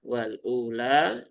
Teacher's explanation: Dia mad badal panjangkan dua harakat. Kemudian l-nya juga dua harakat ya.